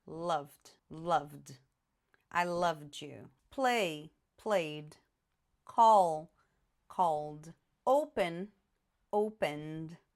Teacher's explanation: Então, quando eu colocar o ed, esse ed vai ser pronunciado como se a palavra terminasse só com d. Eu não vou falar ed, eu vou falar só o d. Por exemplo, love, termina com v.